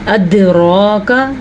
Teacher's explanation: دال کے اوپر قلقلہ کرنا ہے کیونکہ دال حروف قلقلہ میں سے ہے. بعض لوگ اس کو چھوٹا کرتے کرتے زبر کو، کھڑی زبر کو بھی چھوٹا کر دیتے ہیں.